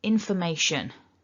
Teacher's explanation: There might be other things you do with this, but it's not a T. That's the key thing, it's not a T sound. Go for that sh. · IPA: /ʃ/